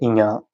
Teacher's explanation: ञ नासिक्य व्यंजन है।